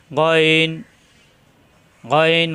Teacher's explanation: নুক্তা আসবে হয়ে যাবে গইন এই যে উপরে নক্তা আসছে গইন গইন কণ্ঠনালীর শেষ অংশ থেকে